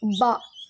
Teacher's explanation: பா வந்து இரு உதடுகள் காய்ந்த பகுதியில் சேர்வதால் உருவாகிறது. பா நம்ம சொல்லி பார்த்தோம் அப்படின்னா சரியான உச்சரிப்பு தெரியும்.